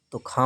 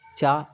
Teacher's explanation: तो खा महाप्राण है चा अल्प प्राण है